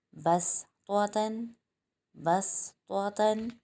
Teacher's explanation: یہاں پر بھی صاد کے اوپر چھوٹا سا سین لکھا ہوا ہے، یہاں پر ہم سین کی ادائیگی کریں گے، صاد نہیں پڑھیں گے، یعنی باریک ادائیگی ہوگی